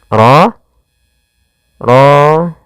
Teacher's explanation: RO di sini ro tafkim rnya harus dibaca dengan tebal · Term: ro tafkhim